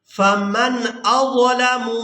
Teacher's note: نون کی آواز کو ظاہر کر کے ادا کریں گے۔ اس کی وجہ یہ ہے کہ نون ساکن کے فوراً بعد جو حرف ہے یہ حروف حلقی میں سے ہے، تو اب یہاں پر ہم نے نون کی آواز کو چھپانا نہیں ہے بلکہ ظاہر کر کے ادا کرنا ہے۔ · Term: اظہار